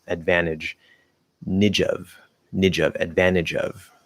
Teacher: Notice I'm dropping the T in NT plus vowel because that usually also works inside of a word, not always, but usually.